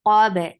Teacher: Min qab, for fatha, open your jaws, attach with ba. Ba will get sifa of qalqala.